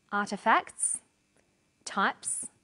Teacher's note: the second way s is pronounced at the end of a word is s it's pronounced this way after voiceless consonants